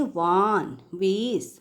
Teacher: लेकिन इंग्लिश में जब वी से कोई शब्द शुरू होता है तो वो जो वी का जो व होता है उसमें क्या होता है, अपर टीथ जो है लोअर लिप को टच करता है